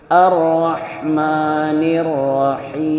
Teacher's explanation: okay പിന്നെ അവസാനം മീം ആയതുകൊണ്ട് നമ്മൾ വഖഫ് ചെയ്യുമ്പോൾ മീമായ മീമായ അക്ഷരം മീം എന്ന അക്ഷരത്തിന് മേൽ വഖഫ് ചെയ്യുമ്പോൾ ചുണ്ട് കൂടണം അപ്പോഴേ മീം ശരിക്ക് വരുകയുള്ളൂ